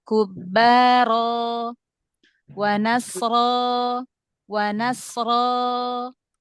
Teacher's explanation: dibuka aja rahangnya, diangkat pangkal lidahnya ya. Huruf ro yang fathah.